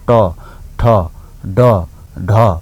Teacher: अब जिब्रोको टुप्पोले दाँतको फेदमा छुन्छ